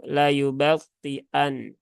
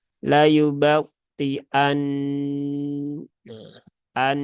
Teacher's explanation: ya menyempurnakan tasdidnya maka harus dibaca dengan disertai tasdidnya laayubtian nah an ditahan juga selama tiga harakat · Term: Nun yang bertasdid